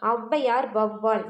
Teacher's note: அதே மாதிரியே முதல்ல வரும், இடையிலும் இறுதியிலும் வராது. அப்போ ஔ அப்படிங்கிறது முதல்ல வந்துச்சுன்னா தனக்குரிய 2 மாத்திரை அளவிலிருந்து குறைந்து 1.5 மாத்திரை அளவில் ஒலிக்கும். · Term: ஔகார குறுக்கம்